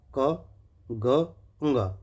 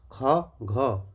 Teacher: क, ग, ंग कम हवा, ख, घ देखिए ज़्यादा हवा मुंह से निकल रही है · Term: महाप्राण, अल्प प्राण